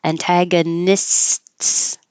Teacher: Make the S, push your tongue up to stop the airflow for the T, and then lower it to have the airflow.